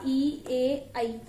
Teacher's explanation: अग्र स्वर, जीभ का अग्र भाग ऊपर उठता है, आगे का भाग ऊपर उठता है